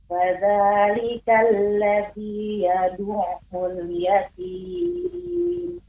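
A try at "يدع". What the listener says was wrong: Yad'u, ya, lebih dipantulkan lagi. Fadzalikal ladzi yad'ul yatim.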